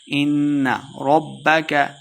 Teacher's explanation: ان نون مشددہ غنہ کر کے پڑھیں گے